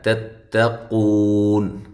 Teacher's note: یہ دونوں تا جو ہیں ان کو باریک پڑھنا ہے